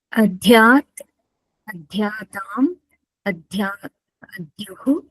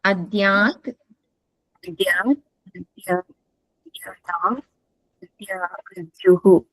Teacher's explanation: It is not Mahaprana Dakara. It is Alpa Prana.